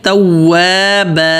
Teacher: تواب با پتلا اور با ایک الف کے برابر کھینچیں گے